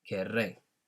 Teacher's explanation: Notice that when we remove the E, because the two R's are next to each other, we've got to create that rolling R sound